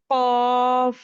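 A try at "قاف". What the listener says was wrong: আপু এটা কেমন যেন একটু বেশি, একটু একটু মোটা হয়ে যায়, কা এরকম হয়ে যায় নর্মালি।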